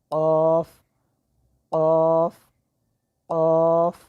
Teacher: قاف زبان کی جڑ اور تالو کا نرم حصہ، یہاں سے قاف ادا ہوگا